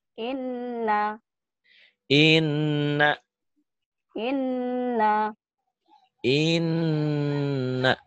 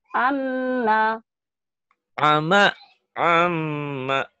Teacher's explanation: Semua huruf ada tasid kayak begini. Tetapi khusus nun dan mim bertasid bukan hanya double. Bukan hanya jadi dua. Tapi ditahan dan dengung. Ditahan ada panjangnya. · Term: gunnah